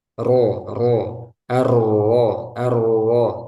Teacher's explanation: takrir artinya ada getaran ro ro ar arro tapi enggak boleh berlebihan